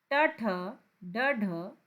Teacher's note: वो ट वर्ग है आपका मूर्धा से बोलने वाला